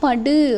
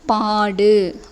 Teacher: முற்றியலுகரம் அப்படின்னா தனக்குரிய ஒரு மாத்திரை அளவில் வந்து குறைந்து ஒலிக்காத முழுமையாக ஒலிக்கும். படுன்னு சொன்னிங்கன்னா அந்த டூ நல்லாவே ஒலிக்கும். பாடு அப்படின்னு சொன்னிங்கன்னா குறைந்து தனக்குரிய ஒரு மாத்திரை அளவில் குறைந்து ஒலிக்கக்கூடிய உகரம் தான் வந்து குற்றியலுகரம்.